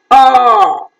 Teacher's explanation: back, between half closed and half open, rounded, long vowel